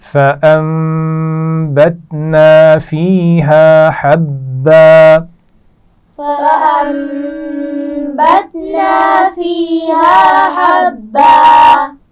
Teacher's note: حا کے مخرج کو واضح کرتے ہوئے با پر شد ہے اس کو سختی سے پڑھیں گے. ایک دفعہ پھر اسی آیت کو پڑھیں گے.